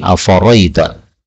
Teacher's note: hamzahnya yang kedua boleh dihapus menjadi afaraita